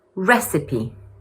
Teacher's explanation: It's also important to note that the first syllable is stressed.